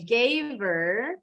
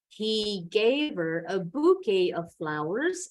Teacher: Jadi bisa disambung nih huruf V dengan bunyi E-nya.